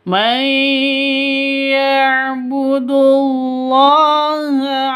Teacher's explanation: Di sini ada Allah atau lafzul jalalah. Lafdul jalalah itu kalau di tengah berarti panjang hanya dua ketukan.